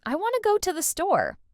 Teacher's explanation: In real, natural speech, we'd actually say, I want to go to the store. The T's are barely audible.